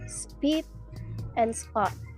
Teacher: voiceless stops, PTK, are unaspirated after S at the beginning of a syllable